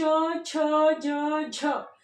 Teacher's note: क्योंकि जो हमारी प्राणवायु है, हमारी श्वास है, वो कुछ घर्षण के साथ में हमारे तालु को स्पर्श करती हुई निकलती है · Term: स्पृष्ट संघर्षी व्यंजन